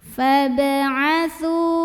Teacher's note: Berikutnya ba-nya qalqalah sughra karena ada huruf qalqalah yaitu ba yang sukunnya ini asli dan ada di tengah bacaan kita. Maka cara baca huruf ba ini adalah dipantulkan dengan pantulan yang kecil ya, ringan. Fab'atsu, su mad tabi'i, mad tabi'inya mad tabi'i zahiri karena ada waw sukun yang didahului baris dhammah.